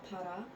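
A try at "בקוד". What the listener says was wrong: No. That's not a P. It's a kuf. Bakwad. Remember, the kuf is the QU sound. Quad. Bakwad.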